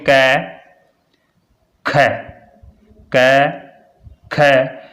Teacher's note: और इसके लिए एक और तरीका है, जैसे महाप्राण बोलोगे कै ख, कै ख, ख बोलते ही आपको ऐसा लग रहा है जैसे कोई गले से बिल्कुल कोई आवाज़ को यानी हवा को पूरा धक्का दे रहा है। ख बोलते ही जैसे कै ख, जैसे पूरा धक्का दे के बाहर निकाली गई है।